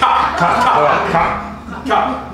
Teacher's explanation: Okay, that is coming from the soft. That's coming from the soft palate. From the back of it, from the back of the throat.